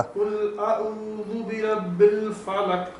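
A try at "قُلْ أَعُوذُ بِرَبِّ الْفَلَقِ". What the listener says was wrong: ہاں نہیں کلکلا بہتر کیجیے گا. فلق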